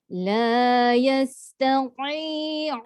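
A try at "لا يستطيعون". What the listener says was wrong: Jangan tati. Kan dia tekan ke dalam. Tati keluar.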